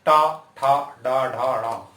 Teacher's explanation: टा वर्ग आपकी जीभ मुड़ेगी और मूर्धा से लगेगी। मूर्धा मुंह के ऊपर वाले भाग को कहते हैं।